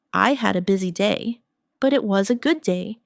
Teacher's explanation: Notice how your voice rises slightly at busy day and falls softly at good day. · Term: intonation